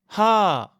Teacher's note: C'est un H expiré, comme quand on veut faire de la buée sur une vitre, ou comme le H dans hello en anglais. Il faut vraiment entendre le souffle.